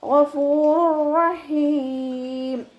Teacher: തെൻവീനിലുള്ള നൂനിനെ റോയിലേക്ക് നമ്മൾ ലയിപ്പിക്കുന്നുണ്ട്, പക്ഷെ ഒന്നെ കൊടുക്കാതെ ഓതുക കേട്ടോ. ഗഫൂറുർ റഹീം എന്ന് പറഞ്ഞിട്ട് മണിച്ചിട്ട് ഓതരുത്.